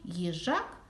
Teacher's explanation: останній звук їжак звук к твердий приголосний